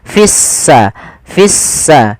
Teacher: lamnya ditandai dengan warna abu-abu artinya lamnya dianggap tidak ada sehingga langsung diidgamkan ke huruf Sin sehingga sinnya berharakat tasdid seakan-akan s-nya dua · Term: alif lam syamsiyah